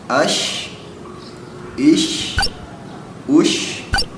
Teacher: Ketika pakai sukun dia dibaca jadi ash, kan? Jadi si tengah-tengah lidahnya diangkat ke atas, nempel ke langit, dibacanya jadi ash, kan? Jadi ada suara hembusan anginnya. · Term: huruf shin